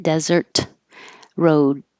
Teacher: hold the t don't release it